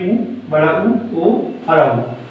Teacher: जब हम बोलते हैं तो हमारे होठों की आकृति व्रत के समान मानी जाती है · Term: व्रतमुखी